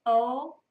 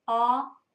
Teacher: Ah, o, you can see that my lips are rounded when I say o, right? Well, where Hebrew has that o sound, Aramaic will have an ah sound. So rounded, unrounded.